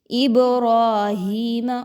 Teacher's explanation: را پر زبر آگی تو اس را کو پر پڑھیں گے